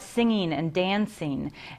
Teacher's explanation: instead of articulating NG words like singing and dancing in the back of the mouth where the velum is, the tongue to the soft palate, we're now at singing and dancing at the front of the mouth, almost like a California sound, right?